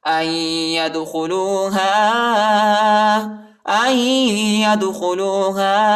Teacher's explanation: حمزہ کو یا کے ساتھ ملائیں گے، نون ساکنہ ہے، نون نہیں پڑھا جاتا اور یا کو دال کے ساتھ ملائیں گے، دال کو جھٹکا دیں گے یعنی قلقلہ کریں گے، ٹھیک ہے. اور ہا کے بعد جو الف ہے اس کے اوپر جو ہے چھوٹا مد ہے، اس کو تقریباً 2-3 سیکنڈ تک کھینچیں گے.